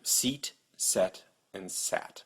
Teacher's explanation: your tongue starts up high, e, then goes to the middle of your mouth, and then goes down to a. So your tongue can go up and down.